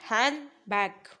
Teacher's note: तो क्या होगा, डी आपका साइलेंट रहेगा।